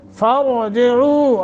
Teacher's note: را کو پر کریں گے، تفخیم کر کے پڑھیں گے ، عو لمبا کریں گے تھوڑا سا، ہوا ازکا لکم، اب